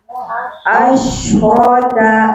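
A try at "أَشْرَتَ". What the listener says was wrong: Bukan hamzah, Bu, ain.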